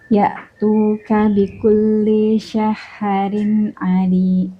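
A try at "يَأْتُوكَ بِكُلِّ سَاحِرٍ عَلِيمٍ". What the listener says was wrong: Tipisnya sudah dapat, tapi tadi di saharinnya panjang pendeknya kayaknya ya Bun ya. Madnya. Nah, haknya itu 2 harokat ya. Saharin. Kalau tadi seperti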